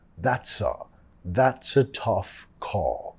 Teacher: Vinculando al sonido schwa.